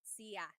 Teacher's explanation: There are some regions in the Philippines where sha is pronounced sia.